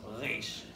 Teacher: You might have a Reish, like our English R, or you might have a Reish in the back of your throat